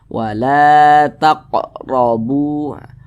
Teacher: huruf ro ro dibaca tebal dibaca tkhim sehingga pangkal lisan kita itu naik terangkat ke atas ketika Kita mengucapkannya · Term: tafkhim